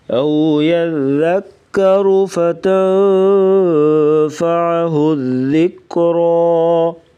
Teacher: وقفاً را کو پر پڑھیں گے موٹا۔